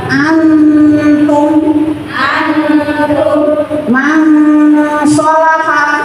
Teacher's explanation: disamarkan antara nun dan huruf berikutnya itu nyampur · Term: ikhfa